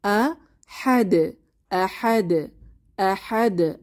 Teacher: যদি আমরা ওয়াকফ করি বা থামি তখন একটু জোরালো করে কলকলা আদায় করতে হবে